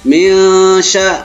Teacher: Karena ini nun mati jumpa dengan sya, sya ini huruf ikhfa, maka dibaca samar-samar. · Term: ikhfa haqiqi